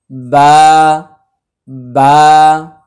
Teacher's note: বায়ের উপরে 2 পেশ, সামনে আসছে মিম, তাহলে আমাদের মনে আছে বায়ের মাখরাজ হচ্ছে 2 ঠোঁটের ভেজা অংশ ভিতর থেকে। স্বাভাবিকভাবে একটা মানুষ যখন মুখ বন্ধ রাখে তখন সে বায়ের মাখরাজেই থাকে, বা জাস্ট খালি মুখটা ফাঁকা হবে, বা বা।